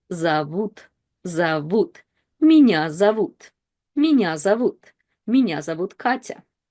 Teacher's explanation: But in a bigger word, we always have to see if o is stressed or not stressed. And in зовут, u is stressed and o is not. So in Russian, one of the reading rules is that o is reduced to a.